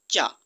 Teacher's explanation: च का उच्चारण स्थान तालू है